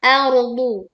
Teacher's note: Ini ro sukunnya dibaca tebal ya karena sebelumnya ada fathah.